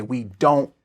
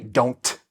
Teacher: Your tongue goes in the t position, but it doesn't release the t. · Often with n and t together, we do not release the t.